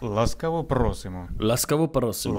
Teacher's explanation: Well, he rolls his R.